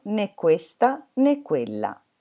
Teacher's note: sono poi 2 monosillabi stravaganti indossano il cappellino accento verso l'alto si chiama accento acuto e ha un suono più chiuso